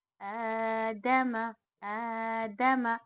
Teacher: حروف مدہ کی طرح، یعنی الف مدہ کی طرح کھینچ کر پڑھیں گے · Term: کھڑی حرکات کا قاعدہ